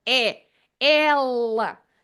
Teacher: you notice that I have opened my mouth so e l it's an open e at the beginning of the word